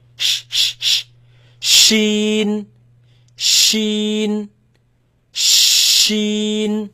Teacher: You feel it in the middle of the tongue.